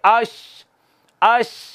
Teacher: ज़बान का दरमियानी हिस्सा ऊपर तालू के साथ लगता है, सिर्फ आवाज़ निकलने की, हवा की थोड़ी जगह बाकी रह जाती है। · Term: शीन